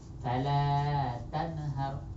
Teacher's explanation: শুধু ইজহার করে পড়বো, স্পষ্ট করে পড়বো, প্রকাশ্য করে পড়বো, কোনো গুণনা হবে না।